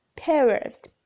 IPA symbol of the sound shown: eə